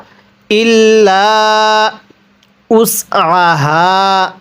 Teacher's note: আইনটা পড়ার সময় গলার মধ্যে চাপ দিয়ে পড়বো।